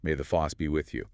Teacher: It perfectly captures that Boston a sound combined with R dropping.